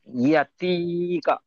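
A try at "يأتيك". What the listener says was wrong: মাশাল্লাহ, ঠিক আছে, খুব সুন্দর হয়েছে।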